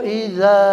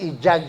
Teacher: idza dza panjang ada alif dza bukan ija